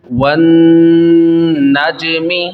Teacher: جیم میں قلقلہ خوب ظاہر کرنا ہے، جیم ساکن ہے